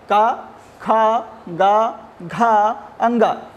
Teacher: कु अर्थात का वर्ग, हा वर्ण, और विसर्जनीया नाम अर्थात विसर्ग का उच्चारण स्थान कंठ होता है